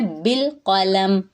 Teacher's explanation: بالقلم، با کو لام سے ملائیں گے، ہلائیں گے نہیں، قاف پر ہے، لام اور میم باریک ہے